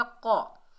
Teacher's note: क़ाफ को मोटा अदा करेंगे, रूफ़ इस्ताला में से है